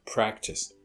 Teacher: you hear as much aspiration and practice and as you hear in pot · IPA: /ˈpræktɪs/